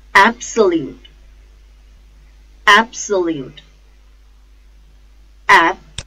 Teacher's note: The stress is on first syllable, ab. Absolute, absolute.